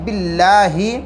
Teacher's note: اللہ کے لام سے پہلے زیر ہے، باریک پڑھیں گے